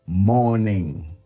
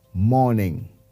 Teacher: while pronouncing the word, the R in the word remains silent